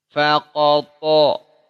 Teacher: Qaf dengan to beda ketebalannya. Lebih tebal to. Qaf hanya isti'la. To isti'la plus mutbaqah.